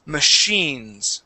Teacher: Now that CH is going to be an SH sound